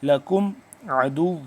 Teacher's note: لکم میم ہے یہاں پہ ساکن، لیکن یہاں پہ غنہ نہیں کریں گے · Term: میم ساکن